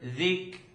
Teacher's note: You hear there's a little click.